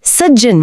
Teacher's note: नियम यह है कि यदि त के बाद च छ, ज झ, ट ठ, ड ढ या ल आए, अच्छा, तो त बिना सोचे समझे अपने बाद आने वाले व्यंजन के आधे रूप में बदल जाता है।